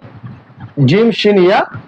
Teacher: জিহ্বার মধ্যখান, জিহ্বার এই যে এটা হচ্ছে জিহ্বার মধ্যখান, তার বরাবর উপরে আবার তালুতে লাগিয়ে দিতে হবে